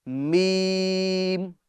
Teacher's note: میم ادا ہوتا ہے دونوں ہونٹوں کے خشک حصے سے۔ خشک حصہ جب ہم ہونٹوں کو بند کرتے ہیں، جیسے یہ ہم نے بند کرا، تو یہ اس کا خشک حصہ ہے، سوکھا ہوا حصہ ہے، ٹھیک ہے۔